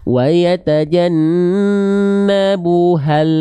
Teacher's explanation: Contoh, wa yatajannabuhal tuh. Jadi ketika le-nya lepas, a-nya masuk di saat yang bersamaan. Wa yatajannabuhal Sekali lagi, kalau misalnya makhraj lamnya lidahnya keburu lepas duluan, itulah yang mengakibatkan lam sukun memantul.